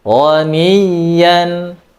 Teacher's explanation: huruf ya mempunyai sifat rakhawah. Jadi tetap mengalir, ya, dijelaskan aliran suaranya.